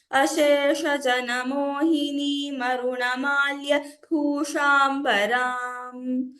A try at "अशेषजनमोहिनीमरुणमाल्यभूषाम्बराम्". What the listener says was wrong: So next time when you chant, try to chant without taking a pause after this malya. So it's Ashesha Janamohini Marunamalya Bhushambaram. Without a pause. So, just to clarify, these are long verses or long padas. So, sometimes, we need to hold our breath and chant in one go.